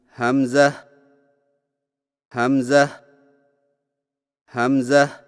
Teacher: ہا کو بغیر کھینچے میم کے ساتھ ملائیں اور میم میں آواز کو لمبا نہ کریں